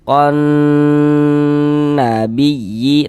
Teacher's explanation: Nanya pendek ya, konnya yang kita tahan sebentar tuh. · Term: gunnah musyaddadah